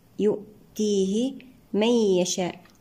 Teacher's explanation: النون مع الياء إدغام بغنة ناقص